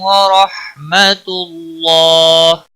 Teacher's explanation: وقف کی صورت میں ہا ساکن پڑھا جائے گا، 3 سے 5 الف کے برابر وقف کی صورت میں کھینچ کر پڑھیں گے